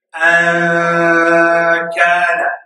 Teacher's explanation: And hiding the sound of the noon means you don't touch you don't take your tongue, you don't physically take two articulators and touch anywhere at all. You just nasalize the sound. You just say it's a nasal sound. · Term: ikhfa